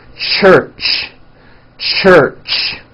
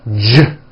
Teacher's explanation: if you take this CH sound and you keep everything in your mouth the same you just add voicing it becomes an American J sound